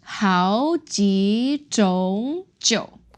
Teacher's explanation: So we modified that 种 to second tone, the word for types.